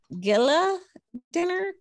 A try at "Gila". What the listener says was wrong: It's Gila. It's Gila. No, it's actually Gila. The G is silent.